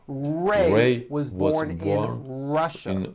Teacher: notice how my lips come forward on all my R's and W's